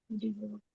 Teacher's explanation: In many words in English, diphthongs like die, I, is not stressed. Another syllable is stressed.